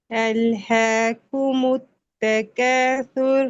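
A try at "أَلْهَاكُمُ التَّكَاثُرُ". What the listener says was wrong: کومت، میم پہ بھی تھوڑا اور ٹائم دیں، می کی دمہ زیادہ راؤنڈ نہیں ہو رہی، اس کی ہو رہی ہے، ٹھیک ہے.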